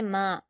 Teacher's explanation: میم پر الف مدہ ہے، دو حرکات کھینچ کر پڑھیں گے